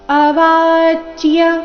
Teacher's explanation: ದುಃಖತರನ್ನು ಅವಾಚ್ಯ ವಾದಾಂಶ್ಚ ಬಹುನ್ ಅವಾಚ್ಯ ವ ದೀರ್ಘ ಬಂದು ಆಘಾತ ಮುಂದೆ ನೋಡಿ ಸಂಯುಕ್ತ ಅಕ್ಷರ ಏನಿದೆ ಅರ್ಧ ಚ ಮತ್ತೆ ಪೂರ್ತಿ ಯ ಯ ಸ್ಪಷ್ಟವಾಗಿ ಕೇಳಿಸಬೇಕು